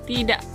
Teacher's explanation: kata tidak diucapkan tidak bisa juga diucapkan menggunakan hentian glotal